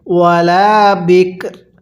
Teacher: রটা হালকা উচ্চারণ করব, কাপটা পরিপূর্ণ উচ্চারণ করব